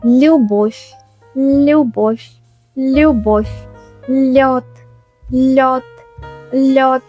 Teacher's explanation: Russian light l. In Russian we have a soft l sound. It's not a hard English l. Your tongue moves closer to the roof of your mouth